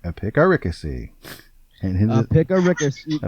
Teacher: It is spelled EPIC, epic, ARI, and then CACY. And the stress is on the 3rd syllable.